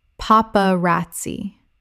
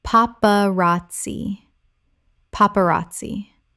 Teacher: youvra oeuvre Word 139 paparazzi Common mispronunciation paparazzi Correct pronunciation paparazzi Four syllables with the stress on the third. The z makes a ts sound in Italian. · 4 syllables with the stress on the third. The Z makes a TS sound in Italian.